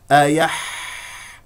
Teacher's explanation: الحاء يجري فيها الصوت والنفس